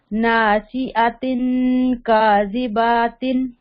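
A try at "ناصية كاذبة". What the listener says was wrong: बा को लंबा नहीं करना, क्योंकि बा के ऊपर सिर्फ जबर है ना, खड़ी जबर नहीं। काजिबातिन, नासियतिन, काजिबातिन,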